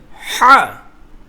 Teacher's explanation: হা, গলার মধ্যভাগ হতে হাটা উচ্চারণ হবে। হা একটু গাঢ় হবে।